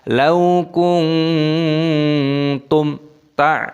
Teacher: mim sukun bertemu dengan ta, idhar syafawi dibaca jelas. Lau kuntum ta, tidak boleh kuntum ta.